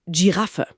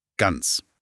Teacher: das G am Anfang von Giraffe klingt gar nicht hinten im Hals.